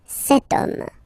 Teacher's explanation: H is not pronounced, so the first sound that we hear is O, okay, and then it will follow the same rule.